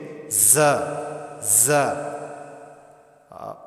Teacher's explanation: زا کے ادا کرتے وقت صفت صفیر یعنی سیٹی کی آواز آنی چاہیے